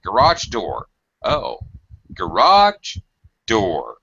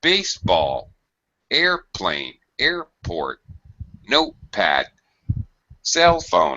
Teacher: my pitch is very high the first word and very low the second word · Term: pitch pattern